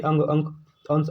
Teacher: नाक से अधिक सांस निकलती है और मुख से कम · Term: अनुस्वार